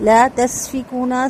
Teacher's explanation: سین کی سیٹی واضح بالکل باریک